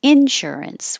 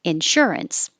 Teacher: the insurance as a noun can be pronounced both ways insurance with stress on in